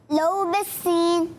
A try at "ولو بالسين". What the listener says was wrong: ہم سب تو ولو سنا رہے ہیں, آپ لو سنا رہے ہیں, کیوں؟ ولو بالسین. ولو واو پہلے.